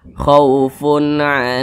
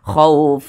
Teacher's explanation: Ain maka hukumnya adalah izhar halqi dibaca jelas tidak berdengung khauunah dibaca jelas pendek saja jangan ditahan jangan didengungkan